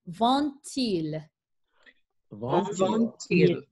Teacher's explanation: In French, you are liaisoning D to another vowel. The sound is a T sound